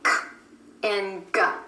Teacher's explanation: k and g, both made by bringing the back of the tongue up to the soft palate